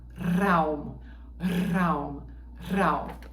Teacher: eu por exemplo falo como o pessoal do sul da Alemanha, né, que canta o R como se fosse o R italiano, o R operístico